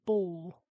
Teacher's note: He uses the vocalization of the dark L.